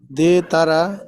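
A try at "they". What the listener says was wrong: আচ্ছা দে একটুখানি শেষের দিকে যে হ্রস্ব ইর মতন করবেন, দেই, দেই তারা, দেই তারা। হ্যাঁ, মানে আপনার ইংরেজি উচ্চারণে এই হ্রস্ব ইর যে উচ্চারণটা আছে মানে পূর্ণ মানে ফুল হ্রস্ব ই আসবে না, কিন্তু হ্রস্ব ইর একটা মানে হালকা বাতাস থাকবে। এটা খুব বেশি ইংরেজির মধ্যে, মানে ওরা একটু মানে হালকা ব্যাকা করে কথা বলে ইংরেজরা, এই।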